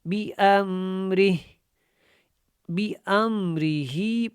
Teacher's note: را اور ہا کو جب جوائن کریں گے تو ہا کی آواز آئے گی، لیکن اس کے نیچے کھڑی زیر ختم ہو جائے گی کیونکہ یہاں جو ہے ہم نے وقف کرنا ہے.